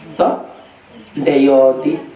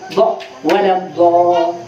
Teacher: Do itu makhrajnya samping gigi ini geraham, samping kanan lidah atau samping kiri lidah, atau bersamaan. · Kalau do-nya Gorontalo ujung lidah. Do, deyoti, ujung lidah. Do-nya orang Arab di samping lidah.